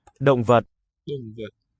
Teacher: the D, the barred through one, that is an implosive voice stop. We're sucking the air into the mouth.